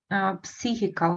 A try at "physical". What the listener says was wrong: P we don't pronounce.